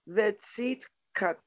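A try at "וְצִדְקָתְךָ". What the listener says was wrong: Vitzid. It's actually di. Vitzid ka te ha. All right, it's you hear the di. You hear the di in this one. Vitzid ka te.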